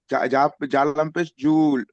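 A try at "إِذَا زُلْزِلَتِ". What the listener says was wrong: জালাম পেশ জুল। জুল টান আছে কি? জুল টান হবে না, জালাম পেশ জুল। ইদা জুল।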